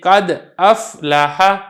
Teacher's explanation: یہ جو دال کا سکون ہے سکون تام ہو اور حمزہ متحرک صحیح صفت کے ساتھ ادا ہو